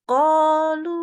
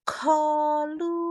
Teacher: membaca qof tapi bersifat hamsnya maksudnya gini ada udara-udaranya tuh keluar ya dihembus